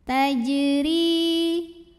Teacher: Ada hukum qalqalah sugro karena huruf jim sukunnya asli dan ada di tengah bacaan. Dibacanya memantul dengan pantulan yang kecil.